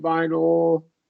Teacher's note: Syllabic L here, schwa, lax short U, however you want to do it, vinyl.